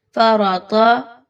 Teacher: اچھے سے اس کو موٹا کر کے پڑھیں، را کو بھی اور تا کو بھی